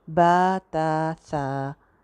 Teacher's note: इसमें जो एक और इशू आ सकता है वो ये है कि जो अलिफ़ की साउंड हम बा के साथ लगा रहे हैं, क्योंकि बा ता और सा को हम अलिफ़ लगा के पढ़ रहे हैं। बा ता सा, एक एक अलिफ़ लंबा कर रहे हैं